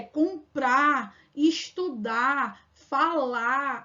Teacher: a gente apaga o r lá no final da sílaba · E o R no final que a gente consegue apagar aqui no Nordeste, que é comprar, estudar, falar.